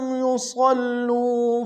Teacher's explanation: أُخْرَى لَمْ يُصَلُّوا، لم میں ساکن غنہ کریں گے، صاد کو موٹا ادا کرتے لام کے سامنے آئیں گے، شدہ زور دیں گے